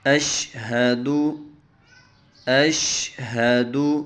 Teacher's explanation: یہ جو دو آنکھوں والا ہا ہے نا، اس کو ہم سینے سے نکالیں گے